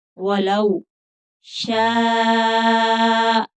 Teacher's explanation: शीन को 5 अलिफ की मिकदार के बराबर खींच कर पढ़ेंगे क्योंकि आगे मद्दे मुत्तसिल है, हमजा उसी कलमा में आ गया है, तो 5 अलिफ की मिकदार के बराबर खींच कर पढ़ेंगे।